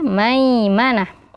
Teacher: ada huruf Ya Sukun sebelumnya huruf berharakat fathah maka dibaca Lin lembut